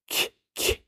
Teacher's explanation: Was auf jeden Fall aber jeder deutsche Sprecher tun wird, der wird am Anfang kein K sprechen, K, sondern irgendwie ein Laut, der stärker am harten Gaumen ist